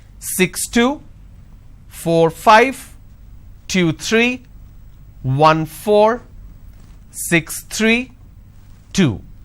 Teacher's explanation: for every 2 digit the second digit my tone is going up · the moment i drop my tone that means it's the end of the series